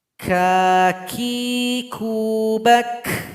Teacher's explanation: Bunyi hamas huruf kaf lebih jelas ketika dia sukun. Bak, itu namanya hamas.